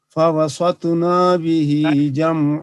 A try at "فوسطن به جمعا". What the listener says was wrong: نون یہاں بھی لمبی ہو گئی. فوسطن به جمعا